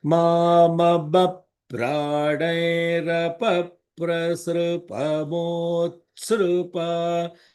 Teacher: The holding is on the th because it is a conjointed ta and sa together.